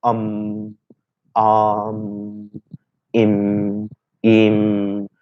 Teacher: air release is only through the nose, and so this is where the nasal sound we create. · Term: anuswara